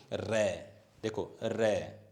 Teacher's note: जब रै का हम उच्चारण करते हैं तो जो हमारा जीभ का अगला भाग है उसमें थरथराहट कंपन होती है, अन्य किसी वर्ण में नहीं होती। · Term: प्रकंपित वर्ण